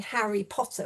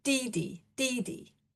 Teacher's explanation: So, for example, we used a so-called DD task, where you have famous names for children like Harry Potter, but instead of saying Harry Potter, which would be a strong, weak pattern, you say DD, DD